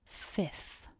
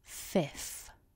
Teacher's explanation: we start with the F sound so top teeth to bottom lip